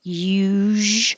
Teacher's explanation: need to make time for the movements usu when you say it's the same as shh but with voicing so make sound